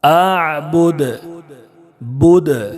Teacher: ما اعبد اعبد، دال میں پیش ہے، لیکن آیت ہونے کی وجہ سے، وقف کرنے کی وجہ سے دال کو ساکن کر کے پڑھیں گے، اور دال ساکن ہونے کی وجہ سے دال میں قلقلہ ہوگا